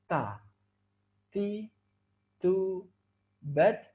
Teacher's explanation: Kemudian huruf berikutnya adalah huruf ta. Huruf ta, makhrajnya dengan menyentuhkan ujung lidah kita dengan gusi gigi seri bagian atas.